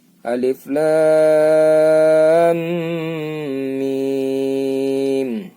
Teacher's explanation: Kalau ini kan ada tasjidnya. Dengung dulu baru mim. · Jadi panjangnya menjadi 9 ya. Jadi 9. 3 dengung, 3 ketukannya dengung, 6-nya bacaan mimnya.